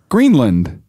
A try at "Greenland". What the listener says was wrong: It's land. It's L-A-N-D, not L-E-N-D.